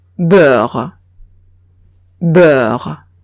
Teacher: EU se va a leer E, como una E francesa, pero un poco larga.